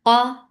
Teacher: Al qaf is heavy. Make it a nice heavy sound by lifting your tongue up only. You're not circling your lips at all. The sound is short.